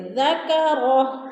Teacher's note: ذکرہ الٹا پیش وقف کی صورت میں ساکن کر کے پڑھیں گے